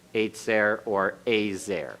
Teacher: Don't make it Eitzer. Don't make it real hard. It's kind of a softened TS when you hear it.